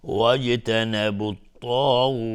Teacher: مد عارض سکون میشه، به مقدار 2 یا 4 یا 6 حرکت میتونیم مد بدیم. اما اگر بخوایم عبور بکنیم مد طبیعی میشه، میگیم واجتنبوا الطاغوت فمنهم من هدى الله.